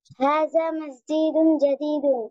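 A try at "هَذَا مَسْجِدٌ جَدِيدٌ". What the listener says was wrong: কিন্তু আপনি কিন্তু মসজিদুন টান দিচ্ছেন। মসজিদুন জাদীদুন, বলেন দেখি আবার।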